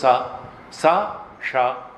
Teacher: सड़क वाला नहीं स दांत में जीभ लगेगी तो स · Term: दती सा